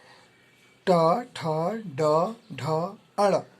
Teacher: ये टवर्ग ये मूर्धा से उच्चारित होते हैं